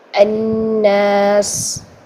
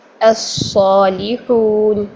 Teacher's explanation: تو صاد میں مستعلیہ استعلاء اور اطباق ہونے کی وجہ سے سین سے وہ ڈفرینشیٹ ہو جاتا ہے، تو اس میں سیٹی بھی سین کی سیٹی باریک سیٹی ہوگی اور صاد کی سیٹی موٹی سیٹی ہوگی، منہ بھر کے ادا ہوگی۔ اور ذا میں جو ہے وہ سیٹی تو پائی جاتی ہے لیکن ہمس پایا نہیں جاتا، اس لیے وہ سین اور صاد سے ڈفرینٹ ہو جاتا ہے۔